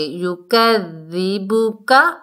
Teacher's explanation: یکذبک عین کو حلق کے درمیان سے دو نہیں پڑھنا، دال کے اوپر جو پیش ہے مجہول نہیں پڑھنا، معروف پڑھنا ہے